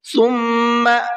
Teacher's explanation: میم کے اندر غنہ کریں گے، اس لیے کہ میم کے اوپر تشدید ہے